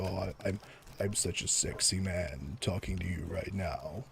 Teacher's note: lowest natural point is get really close to the mic and you add in a little bit of vocal fry